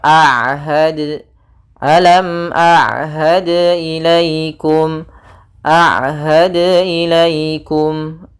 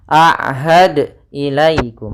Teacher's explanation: jangan sampai terbaca dengan ada tambahan hamzah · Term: qalqalah